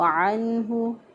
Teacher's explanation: عین کو وسط حلق سے ادا کیا، گلے کے درمیان سے عین کو ادا کر کے اس کے بعد نون ساکن پہ اظہار کیا، کیونکہ نون ساکن